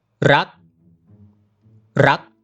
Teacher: Low class, dead short, high tone.